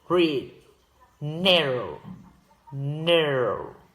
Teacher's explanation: In AE, the tongue is curved further back, giving it slightly muffled quality from the R when it's pronounced read, narrow, narrow.